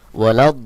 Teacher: লামকে যুক্ত করবে এবং এই এক আলিফের জায়গায় আপনাকে চার আলিফ টান দিয়ে পড়তে হবে